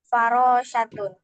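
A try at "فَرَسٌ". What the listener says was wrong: Nggak pakai shin, dia pakainya sin. Farosun.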